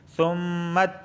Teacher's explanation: میم مشدد ہے اور میم مشدد ہمیشہ غنہ ہوتا ہے۔ ثُمَّ میم کو تا سے ملائیں گے، تا پہ تشدید آئی ہے۔